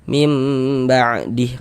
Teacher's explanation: Jadi, kalau ada nun sukun atau tanwin setelahnya bertemu dengan huruf ba, hukumnya adalah iqlab. Maka cara membacanya dengan merubah menjadi huruf mim.